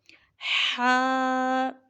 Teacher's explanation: ہا، اب یہاں سے حروف حلقی، مطلب حروف حلقی جو حلق سے ادا ہوتے ہیں وہ شروع ہو رہے ہیں۔ ہا، یہ وسط حلق یعنی حلق کا جو درمیانی حصہ ہے وہاں سے ادا کریں گے